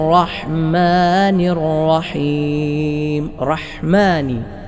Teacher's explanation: ഹ ആണ് തൊണ്ടയുടെ മധ്യഭാഗത്തിൽ നിന്നും പുറപ്പെടുന്ന ഹർഫാണ്